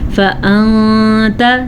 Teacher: فأنت نون ساکن ہے تو اس کو ہم یہاں پہ تا کی وجہ سے یہاں پہ اخفا کریں گے